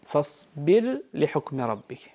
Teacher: عندنا راء ساكنة وبعدها لام، ورش رحمه الله يظهرها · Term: الإظهار